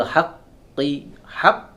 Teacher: tidak ada aliran suara di sana karena qaf tidak bisa mengeluarkan aliran suara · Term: syiddah